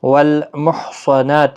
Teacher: صاد مستعلیہ ہے، پر پڑھنا ہے، یعنی موٹی آواز میں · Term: حروف مستعلیہ